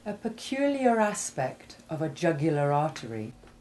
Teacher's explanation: You will have heard that the R in AR, when it ends a word, as in vicar, liar, or peculiar, is almost or completely silent, just like the final H in pariah and Jeremiah. The R becomes more noticeable only when a following word begins with a vowel